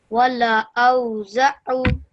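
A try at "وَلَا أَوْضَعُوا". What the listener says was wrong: Make sure you stretch the O out again because of the waw madda. Okay. O.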